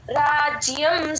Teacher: ఆ రాజ్య రా అన్నప్పుడు దీర్ఘం కొంచెం తగ్గించొచ్చు అండి